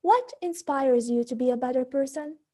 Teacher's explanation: we use a fallen intonation at the end of the sentence